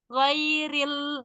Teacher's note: Lamnya itu ee enggak ditaruh di tengah, Bu. Di agak majuin dikit.